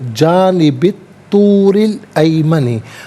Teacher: را کے نیچے زیر را کو باریک کر کے پڑھا جائے گا